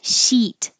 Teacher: So sheet, like in sheet of paper, this is where your vowel is very high. Your tongue is very high. E, you should feel it tense and towards the front. Sheet, like eat.